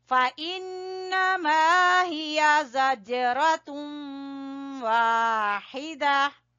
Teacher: نون مشدد کا غنہ، پھر الف مدہ، پھر زج جیم کے اوپر قلقلہ، پھر را کو پر پڑیں گے، پھر تم ادغام ہوگا.